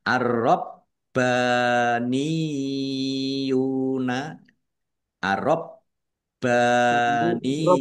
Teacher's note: ya tasdid kalau di depannya harokatnya kasroh maka ini ditahan ya membacanya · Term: mat tamkin